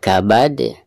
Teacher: ketika diwakofkan maka huruf dal tersebut harus dipantulkan dengan suara pantulan yang tebal karena dihukumi qalqalah kubro ya.